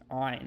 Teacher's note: It is either silent or it is like just like like it doesn't have any of its own sound. However, in biblical Hebrew, it is pronounced in the back of the throat like the Arabic ayn. So you want to kind of say ah and then move it in the back of your throat while kind of constricting your throat, kind of like you're about to throw up even. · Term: pharyngeal stop